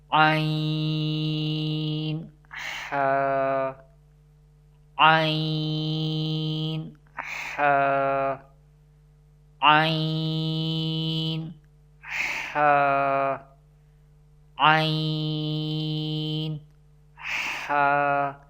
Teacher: These both letters pronounced from the middle part of the throat. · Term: throat letters